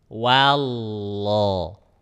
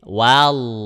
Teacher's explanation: Nah, ujung lidahnya digusi, pangkal lidahnya dinaikkan, gitu. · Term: tebal